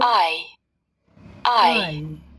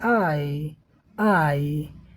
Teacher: आ से इ की तरफ हमारी जीभ भागती है। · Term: संयुक्त स्वर